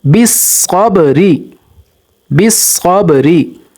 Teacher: اب یہاں پر دیکھیے صاد موٹا حرف ہے اور با حروف قلقلہ ہے، تو یہاں پر صاد کو موٹا کریں گے اور با پر قلقلہ کریں گے